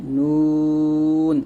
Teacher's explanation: জিহ্বার আগার তার বরাবর উপরে তালুর সঙ্গে লাগিয়ে একটা উচ্চারিত হয় নুন